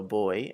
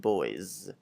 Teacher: in English, we hear the z, the s sound at the end